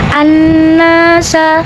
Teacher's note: Kemudian hukum alif lamnya dinamakan hukum alif lam syamsiyah karena alif lam menghadapi hukum syamsiyah yaitu nun. Maka cara bacanya alif lam tidak kita baca atau disebut dengan idgham syamsi